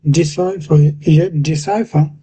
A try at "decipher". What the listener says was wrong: Right. Yeah, that's pretty much it. Yeah, that's it.